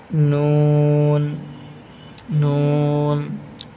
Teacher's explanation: জিহ্বার আগা তার বরাবর উপরের তালুর সঙ্গে লাগাইয়া